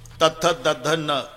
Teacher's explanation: किती ताकद लावून धक्का मारते जीभ आतून दाताला